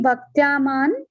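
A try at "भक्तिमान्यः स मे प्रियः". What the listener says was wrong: Not Bhaktya Didi, Bhaktiman. Not Bhaktya, Bhakti Manyas. Bhakti Manyasya me priyaha.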